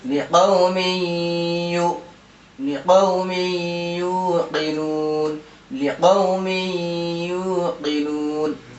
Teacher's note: کیونکہ تنوین کے بعد حروف یومن میں سے یا آ رہا ہے، اس لیے یہاں غنہ کے ساتھ ملا کر پڑھیں گے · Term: ادغام مع الغنہ